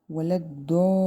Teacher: یہ 5 الف کے برابر بڑی مد ہے، 5 الف کے برابر لمبا کریں گے اور وقف کریں گے، آگے نون کو ہم ساکن کر دینا ہے۔